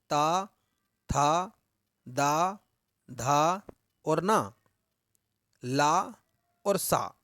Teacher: दंत है। यानी कि हमारी जो जबान है, जो जीभ है, वो दांतों को स्पर्श करती है, छूती है, इसलिए इन वर्णों को कहते हैं दंत्य वर्ण